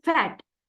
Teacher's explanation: It produced with the lower lip against the upper teeth